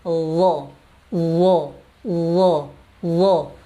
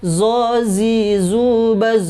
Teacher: ujung lidah dengan ujung gigi seri atas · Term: huruf dha